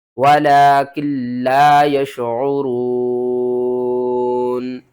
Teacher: یہاں پر جب ہم وقف کریں گے تو نون کو ہم ساکن کر دیں گے